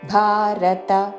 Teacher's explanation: భారత మహాప్రాణాక్షము భ దీర్ఘముతో చివరిలో త హ్రస్వము కాబట్టి భారత అని దీర్ఘము పలకకూడదు.